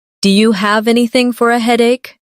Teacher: Do you sounds like dia.